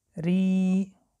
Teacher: ری با کسره باریک خوانده می شود